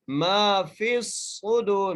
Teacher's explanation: فا کو صاد سے سختی سے ملانا ہے اور صاد کو موٹا کر کے پڑھنا ہے · میم کو ایک الف کی مقدار کھینچ کے پڑھنا ہے